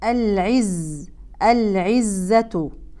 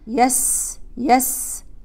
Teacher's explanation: صفير الزاي يتردد بين اطراف الثنايا العليا والسفلى العزه العزه الخطا الشائع بيان هذا الصفير وكانه صفير سين صفير